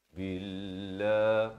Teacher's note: Billah, lafaz jalalah di sini dia baca nipis. Billah, bukan billah, itu tebal.